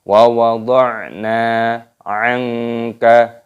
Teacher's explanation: Nunnya dipanjangkan, ada tanda alifnya mad tabi'i, dua ketukan.